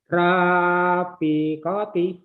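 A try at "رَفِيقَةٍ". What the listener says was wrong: Emang Bapak orang Palembang, Ro, Pak. Ro. Sering bergabung sama kakak besar nih jadi Ra. Ro, Fikoti. Ro ya Pak ya.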